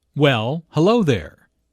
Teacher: Notice the emphasis on hello, which shows that did not expect to see Julia.